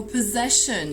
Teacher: possession here with the stress on the second syllable, and again, one of the phonetic symbols that are difficult and we need to memorize.